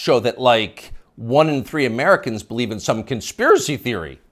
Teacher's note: You'll notice the upspeak, the rising inflection at the end of the sentence. That's a familiar tick in Brooklyn.